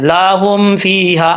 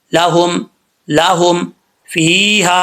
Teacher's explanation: ہا کے آگے الف ہے تو اس کو ایک الف کی مقدار لمبا کریں گے